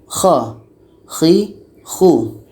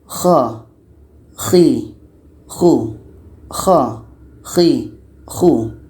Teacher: Dan cara bacanya, pangkal lidah kita ini akan naik ke langit-langit. Sehingga nanti akan menyebabkan suara kita tebal mengisi rongga mulut.